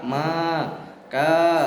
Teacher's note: ada bacaan mad juga maka. Ini panjangnya 1 alif 2 harokat.